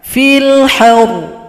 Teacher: Ro-nya disukunkan, ditasydidkan. Kemudian huruf H ditekan. Fil haur. Satu ketukan.